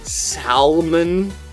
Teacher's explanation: many are saying the word salmon with a distinguishable L sound